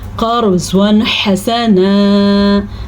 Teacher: را کو پر پڑھیں گے کیونکہ را ساکن ہے اور اس سے پہلے زبر ہے اس لیے، لیکن قاف کو بھی ہم نے پر پڑھنا ہے، زواد کو بھی ہم نے پر پڑھنا ہے۔